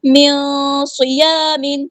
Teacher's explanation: نون ساکن کے بعد صاد ہے تو اخفا ہو رہا ہے، ہم نے نون ساکن کے بعد کو چھپا دینا ہے اور 2 کاؤنٹس یعنی 2 حرکات یہاں پہ رکنا ہے، صاد